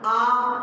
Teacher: हमारा मुंह पूरा खुला हुआ है अर्थात गोल नहीं हो रहा